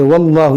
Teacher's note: اس اللہ کے لام کو ہم موٹا کریں گے کیونکہ یہاں پر زبر ہے. زبر یا پیش ہو تو موٹا کرتے ہیں، زیر ہو تو باریک.